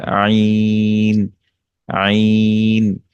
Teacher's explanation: আইন, এটা কণ্ঠনালীর মাঝখান থেকে উচ্চারিত হয়। আইন অর্থাৎ এখানে যে কণ্ঠনালীর যে মাঝখানের জায়গাটা আছে সেটাকে প্রেসার দিয়ে এই মাঝখান থেকে এটা উচ্চারণ হবে আইন। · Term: ওয়াসাতুল হালক